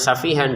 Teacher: Safi memiliki panjang dua ketukan.